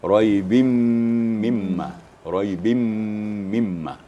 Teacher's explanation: Nun musyaddada, mim musyaddada itu wajibul gunnah, wajib berdengung. · Kemudian kita lanjut kepada idgham ma'al gunnah fi raibim mimma. Nun mati atau tanwin ya, memasukkan bunyi nun mati atau tanwin serta dengung.